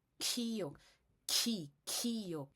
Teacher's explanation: a terceira categoria de consoante aspirada, que tem muito ar saindo, você tá tossindo, tosse, com falta de ar.